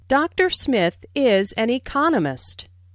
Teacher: Notice the stress on economist. This content word has new information, so it is emphasized. There are 4 syllables in economist, with the stress on the second syllable, economist.